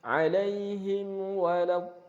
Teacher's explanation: Di sini ada mim sukun bertemu dengan wawu, maka harus dibaca idhar. Dan idharnya sangat jelas ya. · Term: idhar syafawi